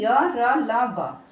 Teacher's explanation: यह चारों जो है सघोष है और अल्पप्राण है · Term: अंतस्थ व्यंजन